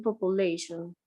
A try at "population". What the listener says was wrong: Population. Me gusta. Ahí sí.